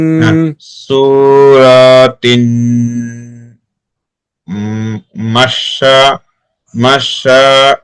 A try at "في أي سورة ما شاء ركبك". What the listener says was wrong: মাশা টান হবে। ফি আইয়ি সূরাতিম মা শাআ রাক্কাবাক।